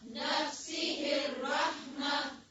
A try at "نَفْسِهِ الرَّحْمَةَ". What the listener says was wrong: आखिर में हाँ को वाज़ेह करें